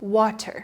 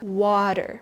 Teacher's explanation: this is the textbook way to pronounce it with a slow, clear T